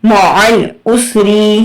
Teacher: اب یہاں دیکھیں آپ کو آئین پہ نا لوگ کیا کرتے ہیں، یہاں پہ مطلب جھٹکا دے دیتے ہیں۔ آئین کی آواز سکویز کر کے نکلے گی، کبھی بھی جھٹکا نہیں دینا، ٹھیک ہے؟ اس کی آواز رگڑ کے آتی ہے، سکویز کر کے نکلتی ہے۔ میم زبر ما، عین لام زبر عل، معل، عین سین پیش اس، را زیر ری، معل اسری، وقفن معل اسر۔